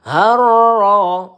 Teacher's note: Ro tasdid kita tekan dan kita baca tebal. Harro. Ro satu ayunan atau dua harakat ya.